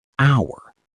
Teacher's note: It starts with the letter h a consonant but the h is completely silent. We start speaking on the o sound hour.